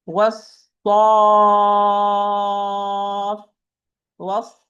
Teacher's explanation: I give the fa with shadda nabr or stress to be clear. This is one of the places where the nabr you must apply nabr after mad lazim.